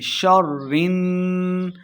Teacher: نون مشدد ہے، را کو نون کے ساتھ ملائیں گے